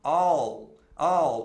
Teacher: é o Dark L que a gente fala quando a língua vai para trás quando você pronuncia o l não é igual o l do